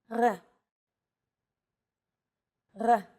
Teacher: be fooled this letter is pronounced differently than in english r it's pronounced at the back of the throat instead of forward in the mouth